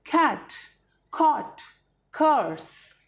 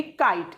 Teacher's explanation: जो सी वाला क था उसमें हम बोलते थे ख, थोड़े सी क के साथ ह की साउंड हम लेते हैं